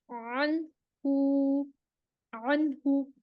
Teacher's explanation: سانس رکے گی، آواز جو ہے وہ بالکل غائن کی طرح بالکل چلے گی نہیں، دبی دبی سی چلے گی